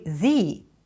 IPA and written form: ðiː (THE)